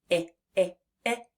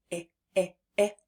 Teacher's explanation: the I sound is something that we say in sort of a bouncy, short, and quick way, it's not a stop sound. We can stretch it for as long as we have air. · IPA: /ĭ/